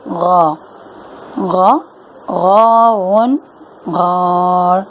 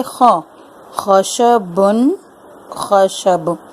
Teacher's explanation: غین خا بھی ادا ہوتے ہیں حلق سے، لیکن حلق کے کس حصے سے؟ حلق کے اس حصے سے جو کہ منہ کی جانب ہے